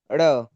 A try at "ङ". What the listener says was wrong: ड़ नहीं है ये, ड़ के नीचे तो पेड़ वाला ड़ थोड़ा है, उसके तो नीचे बिंदी होती है, इसकी बिंदी देख कहां पर है।